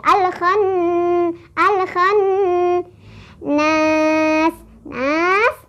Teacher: Nun bertasdid cara bacanya adalah didengungkan ditahan dengungannya dua atau empat ketukan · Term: gunah